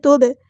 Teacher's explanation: با پہ کلکلا ہوگا